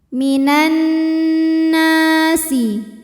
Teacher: Minan, nunnya dihukumi dengan gunnah musyaddadah karena nunnya bertasydid, maka dibacanya dengung, tahan bunyi n sampai ada suara masuk hidung kurang lebih 2 harokat. Minan nasi, na matobi'i zahiri, sebab ada alif didahului harokat fathah, maka nun panjang 2 harokat.